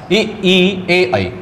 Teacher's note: उच्चारण करने पर जीभ का अग्र भाग आगे वाला भाग ऊपर उठता है और हल्का सा और नीचे जाता है, ई ए आई। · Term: अग्र स्वर